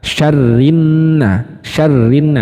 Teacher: alif lam syamsiah lam sukunnya itu di leburkan